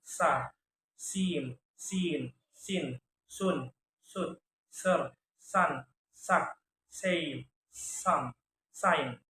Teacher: Voiceless alveolar fricative sound